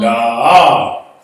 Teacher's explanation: That's an open syllable, so it's long. Da, you drag out that da. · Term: long vowel